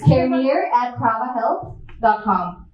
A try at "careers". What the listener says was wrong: Careers. an S at the end.